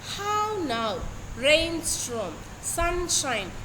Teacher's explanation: it is a pattern of two subsequent stressed syllables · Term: spondy